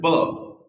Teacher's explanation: The moment you say B, the lips they come together, there's a touch. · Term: consonant sounds